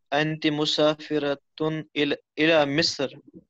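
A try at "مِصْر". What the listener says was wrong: इला मिस्र नहीं मिस्र. मिस्र सौद के ऊपर. सौद सौद साइलेंट है. सौद साकिन है. इला मिस्र. हाँ इला मिस्र.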